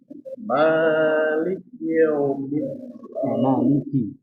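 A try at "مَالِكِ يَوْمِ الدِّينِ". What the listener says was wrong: Maliki yaum. Jadi ketika ya kita buka ya-nya yau tapi langsung dimonyongkan. Ya diucapkan dulu fathahnya ya sempurna. Ya yau. Maliki yaum. Jangan sekedar maliki yaum tapi yau. Yau. Nah, jangan campur. Jangan langsung. Jadi kasrahnya pada huruf kaf.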